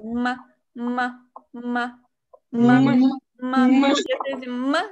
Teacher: Тх, тх, хэньхао. И буква М более протяженная, такая звонкая, чем русская.